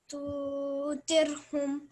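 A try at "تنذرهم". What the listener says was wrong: Okay, you're saying tu. Try not to say that. Say tun. So I'm giving a nasal sound. I'm hiding the noon. I'm saying the noon, but I'm hiding it at the same time. Tun.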